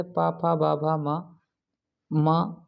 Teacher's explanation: ये ओठों से मिलाने वाले बोले जाते हैं, इसलिए इन्हें ओष्ठ व्यंजन कहा जाता है।